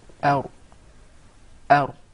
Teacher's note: That's an English ra now, where the tip of the tongue is far away from the gum.